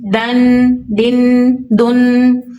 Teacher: ضاد مستعلیہ ورڈ ہے، اس کو پر اور موٹا پڑھیں گے